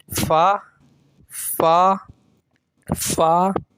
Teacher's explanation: فا بالکل نارمل پڑھیں گے, منہ ہونٹوں سے ادا ہوا ہے